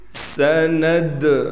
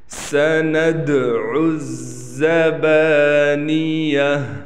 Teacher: قلقلہ ہے، قلقلے میں آواز کو ہلائیں گے